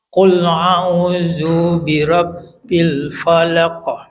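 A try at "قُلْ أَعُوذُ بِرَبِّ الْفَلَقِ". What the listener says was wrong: Dunya coba dicepetin lagi, du pendek. Qul a'udzu Dzubirab dunya cepet pendek.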